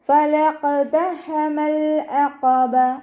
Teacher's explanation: ഖാഫ് ഇസ്തിഅലാൻ്റെ ലെറ്ററാണ്, തഫ്ഹീം ചെയ്തിട്ട് ഉച്ചരിക്കുക. കൽക്കലയുടെ ലെറ്ററും കൂടി ആയതുകൊണ്ട് സുക്കൂനാവുമ്പോൾ ഫുൾ സുക്കൂന് കൊടുക്കുക.